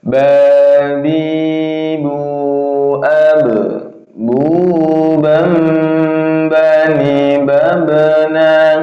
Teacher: Ba itu tempat keluarnya huruf yaitu di syafawiyah, yaitu dua bibir terkatup ya.